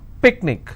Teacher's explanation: picnic i will stress on pick